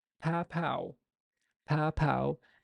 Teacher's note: put your your hand in front of your mouth you'd notice there's a burst of air that just came out basically an explosion of air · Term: stop